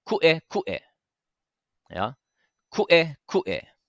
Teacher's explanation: we have two okina here, right? So it's going to make those sharp breaking sounds in the middle of our word